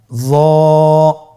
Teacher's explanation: জিহ্বার আগা, সামনের উপরের 2 দাঁতের আগার সঙ্গে লাগিয়ে উচ্চারিত। · একটু মোটা করে বলতে হবে। হরফটি হলো মোটা হরফ, বারিক করে পড়া যাবে না এবং হরফটি উচ্চারণ করার সময় অবশ্যই 1 আলিফ টেনে পড়তে হবে।